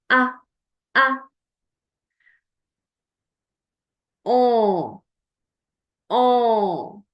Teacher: I'm blocking the passage of the air through my mouth and it's coming in my nose. And you can feel a slight vibration in your nose as you do it. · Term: French nasal sound